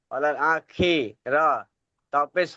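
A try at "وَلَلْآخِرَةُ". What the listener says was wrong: মাশাআল্লাহ, কিন্তু আরো স্পষ্ট উচ্চারণ করতে হবে আমাদের, আরো মেহনত বাড়াতে হবে। খা নাই, খা নাই, কোথাও খা পড়ে নাই। খ।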